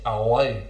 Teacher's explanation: A feature that we find here is the common use of the dark L.